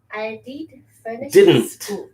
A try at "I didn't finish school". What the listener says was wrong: Didn't. Didn't. Didn't. The second D you're almost not pronouncing. didn't. Didn't. I did. I didn't.